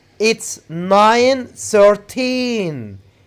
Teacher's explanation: we put the stress on teen